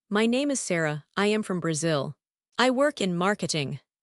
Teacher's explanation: I tend to go up at the end of sentences because I am unsure. It sounds like a question. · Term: upspeak